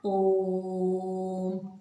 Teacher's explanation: 3 मात्रा का समय लगता है, उन्हें हम प्लुत स्वर कहते हैं